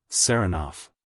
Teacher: he pronounces the name with the stress on the second syllable